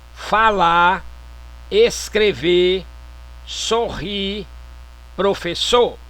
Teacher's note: Supressão do R final dos vocábulos